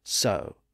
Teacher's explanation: in that environment of s wo the W sound was lost in the middle giving us the modern word so